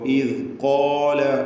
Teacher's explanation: ഖാഫിനും അലിഫിനും തഫ്ഖീം തടിപ്പിച്ച് പറയാം